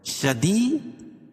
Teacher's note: یا ساکن سے پہلے زیر ہے تو یا مدہ، اس کو ایک الف کے برابر کھینچ کے پڑھیں گے